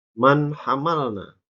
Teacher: nun mati bertemu dengan huruf ha ya maka di baca jelas atau dibaca izhar